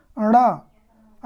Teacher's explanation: कहाँ से बोला जा रहा है? मूर्धा से और नासिका से।